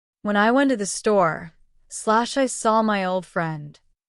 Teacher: Notice the small pause after store. That pause helps separate the first idea going to the store from the second idea seeing the old friend. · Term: thought groups, Thought groups